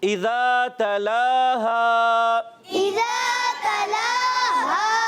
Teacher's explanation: تلاہا میں لام پر کھڑا زبر اور ہا حرف مدہ ان دونوں کو بھی ایک ایک الف ہم کھینچ کر ادا کریں گے